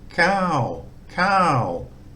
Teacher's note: so high class initial consonant uh it's a long vowel um it uses the first tone mark which gives it a low tone